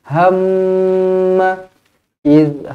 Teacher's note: mim yang bertanda sabdu wajibul gunnah dengan dua harakat